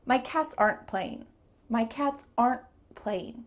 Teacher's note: There's a pause because my tongue stopped at the top of my mouth. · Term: stopped T